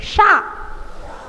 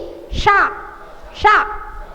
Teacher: षटकोण वाला सा जो होता है वो मूर्धन्य सा कहलाता है। जीभ मूर्धा से लगती है, शा। जीभ ऊपर लगेगी, शा शा।